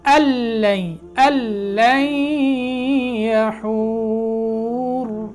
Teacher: लेकिन नून का लाम में इदगाम हो जाएगा, सिर्फ लाम पड़ी जाएगी। फिर अल्लन अल्लन यहूर, ये ऐसे वक्फ होगा, रा मोटा हो जाएगा।